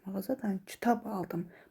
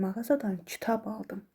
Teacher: Aldımdan əvvəlki söz kitab sözüdür. Deməli burada məntiqi vurğu kitab sözünün üzərinə düşür.